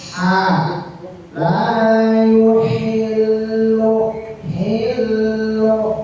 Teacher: Wala yahillu lahunna wala lam alif panjang dua harokat maka ini ha lam yahillu adalah ha kecil atau di tengah-tengah tenggorokan atau huruf halqi